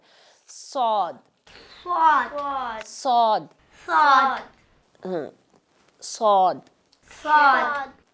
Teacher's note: होंठ हम पीछे फैले भी रखेंगे, सिर्फ मुंह में आवाज को हम भरेंगे, भारी आवाज करेंगे।